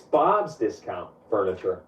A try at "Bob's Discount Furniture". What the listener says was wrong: You're putting the emphasis on the wrong syllable. It's Bob's Discount Furniture, as in get Bob's discount on furniture.